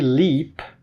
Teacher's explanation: this is a voiced alveolar lateral approximant